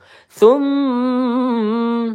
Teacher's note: Tum mim bertasydid gunah musyaddadah. Kita tahan dua atau tiga harakat ya. Jangan buru-buru.